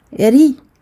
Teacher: le ra est muraqqaq. Donc on va l'amincir parce qu'il porte une kasra.